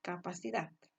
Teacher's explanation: en la palabra capacidad que se separa en cuatro sílabas la última sílaba está la mayor intensidad de voz capacidad verdad está última sílaba es simplemente tiene una mayor intensidad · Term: sílaba tónica